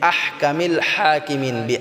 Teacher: এটা আমাদেরকে এক আলিফ টেনে পড়তে হবে আহকামিল হাকিমিন আহ এটা গলায় চাপ দিয়ে হাটাকে উচ্চারণ করতে হবে কামিল হাকিমিন হাটাও গলায় চাপ দিয়ে এক আলিফ টেনে পড়তে হবে